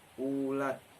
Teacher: vokal belakang tinggi bunder · Kemudian ada lagi vokal U, vokal belakang tinggi bundar, contohnya pada kata ulat.